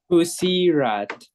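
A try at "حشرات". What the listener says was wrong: close. This is not a scene. What is this? How do you say this? Hushirat. Hushirat.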